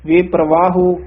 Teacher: ਔਂਕੜ ਵੀ ਉਚਾਰਨ ਕਰਨਾ ਵੇਪਰਵਾਹੁ ਗੁੜਾ ਨ ਬੋਲਣਾ ਹੈ